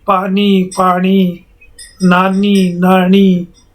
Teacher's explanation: मारवाड़ी में न के स्थान पर ण का उच्चारण होता है